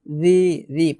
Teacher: রি, রি, পাতলা করে উচ্চারণ করতে হবে, মোটা হবে না কিংবা শক্ত করা যাবে না।